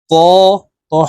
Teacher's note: ত হরফ মোটা ভাবে উচ্চারণ করব এবং এক আলিফ টানে পড়বো